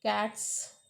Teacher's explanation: in case of cats because of t is voiceless so cats become voiceless